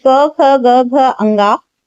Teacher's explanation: क वर्ग में जितने भी वर्ण आते हैं उनका उच्चारण स्थान होता है कंठ।